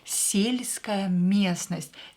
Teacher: Ударение на букву Е.